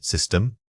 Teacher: Say this word by isolating the first syllable sis. Keep your mouth slightly open for that short vowel. The stress balls heavily on the second part of the word.